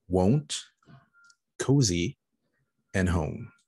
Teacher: the diphthong oh a combination of two vowel sounds in words like won't cozy and home